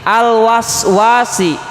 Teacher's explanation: Misalkan di sini al-waswasi, yang berharokatnya itu huruf wawu, berharokat fathah. Setelah wawu ada alif, maka wawu tersebut harus dibaca panjang, kurang lebih 2 harokat, disebut mad asli.